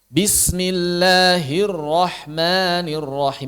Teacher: lam bertasydid di millah ro bertasydid dirrahman ini sama dengan mengucapkan dua huruf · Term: huruf bertasdid